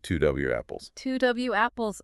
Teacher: it's like a tiny little ramp between the O of two and the a of apples · We slip in a W sound and it ends up sounding more like two W apples.